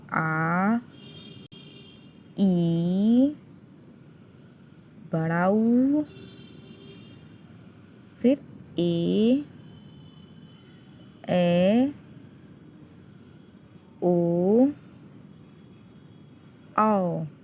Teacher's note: दीर्घ स्वर में वे स्वर आते हैं जिनके उच्चारण में दुगुना समय लगता है